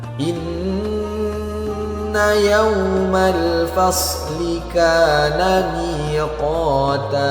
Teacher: Wa jannatin alfafa inna yawmal fasli kana miqata. Perhatikan nun yang bertasydid, maka harus kita dengungkan 2 harokat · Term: gunnah